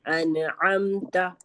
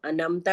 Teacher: عین کو ہم موٹا پڑھیں گے حلق سے پڑھیں گے. ٹھیک ہے. عین حلق پہ.